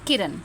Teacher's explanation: किरण हमारा छोटी इ है जो हमारा बहुत जल्दी हम उसको बोल दे रहे हैं तो इसीलिए वह हमारा ह्रस्व स्वर है।